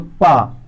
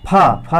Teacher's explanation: पा ये अल्प प्राण है, फा ये तो महाप्राण है।